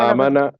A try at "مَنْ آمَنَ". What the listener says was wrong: لمبا نہیں کرنا، یہ ذہن میں رکھ لیں. من آمن کہیں